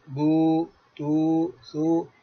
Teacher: ہونٹ، دونوں ہونٹ کے خلا سے بغیر ملائے آواز نکلتی ہے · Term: واو مدہ